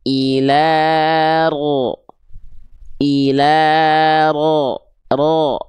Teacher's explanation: bunyi vokal O di sini tebalnya itu karena pangkal lidah naik, PLN tadi, isti'la tadi.